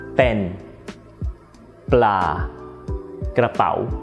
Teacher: If you pronounce 'puh' without your breath coming out you'll get the /bp/.